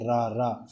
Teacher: भी आप बता सकते हैं जैसे हम रा बोलेंगे रा रा तो रा बोलेंगे तो हमारी जीभ आगे से मुड़ गई होगी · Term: लुंठित व्यंजन